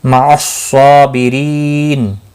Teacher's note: صاد مستعلیہ ہے، پر پڑھا جائے گا، لام کے اوپر کھڑی زبر ہے، 1 الف کے برابر کھینچ کر پڑھیں گے اور وقف کی صورت میں اولتا ہا ساکن پڑھیں گے۔